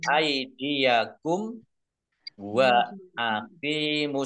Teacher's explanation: mim sukun bertemu dengan huruf wau bacaan izhar syafawi dibaca jelas